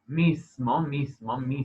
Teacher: esta s no es sorda en ese contexto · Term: sonorización